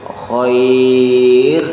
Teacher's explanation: Khair di situ adalah mad layin, dibaca panjang apabila diwakafkan, tetapi kalau diwasal tidak ada panjang